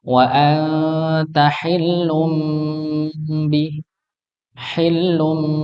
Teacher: memang ketika tanwin bertemu dengan ba maka dia menjadi hukum ikqlab maka diubah bunyinya bukan Nun tapi mim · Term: hukum iklab